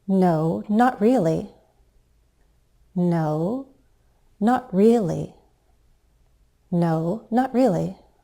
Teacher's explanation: We'll use a fall rise to sound hesitant.